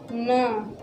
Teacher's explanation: आप बोलना न, यानी देखना गले से और यहाँ से एक स्वर का कंपन हो रहा है। आप नासिका से देखना कि गले से और ये नासिका से स्वर का कंपन हो रहा है।